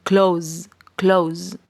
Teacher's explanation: esta S no se pronuncia como una S, sino como una Z